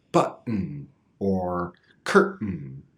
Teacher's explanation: making the stop sound in the throat instead of in the tongue is much faster and easier